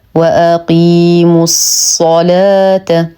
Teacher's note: اللام شمسيه مدغمه بالصاد وهمزه الوصل تسقط في درج الكلام واقيموا الصلاه نرقق اللام ونخلص من تفخيم الصاد فلا نقول الصلاه · نرقق اللام ونخلصها من تفخيم الصاد، فلا نقول الصلاة إلا برواية ورش.